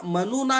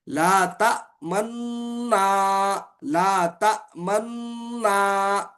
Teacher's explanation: पहले मुतहरिक नून का दूसरे नून में इगाम हुआ पहले मुतिक जो नून था दूसरे में इसका क्या हुआ इदगाम